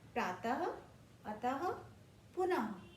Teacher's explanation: विसर्ग, दो बिंदियां शब्द के बाद जब दो बिंदी लगाई जाएगी तो वो विसर्ग कहलाती है। इसका उच्चारण करते समय ह की आवाज आती है